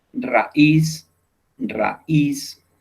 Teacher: son palabras agudas porque el golpe lo estamos dando en la última sílaba